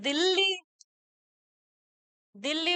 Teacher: तो इसमें ला का द्वित हो रहा है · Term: द्वित्व व्यंजन